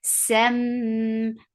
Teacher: Sem, for fatha upon jaws attached with mim, you will get sifa of kunna. This kunna is akmal, so keep the sound in your nose for a longer time.